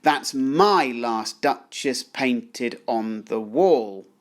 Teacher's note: the emphasis falls firstly on the word my